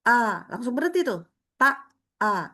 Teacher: pita suaranya menutup rapat. Maka di sini aliran suara ketahan sama sekali langsung berhenti, nama sifatnya syiddah.